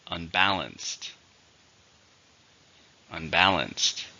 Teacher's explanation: it has three syllables stresses on the second syllable